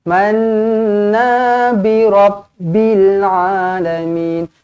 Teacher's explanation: Baik. Manna, nun sabdu wajibul gunnah, dengungkan 2 harakat